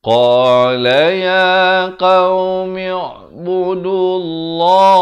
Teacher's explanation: Lafz jalalah ni dibacakan tebal dua harakat.